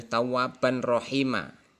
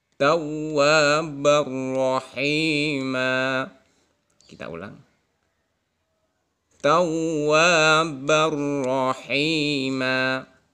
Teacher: maka tidak boleh tawaban rohima. Jadi idgham memasukkan tanwin ke dalam ro, tapi tanpa mendengung, sehingga bacanya begini.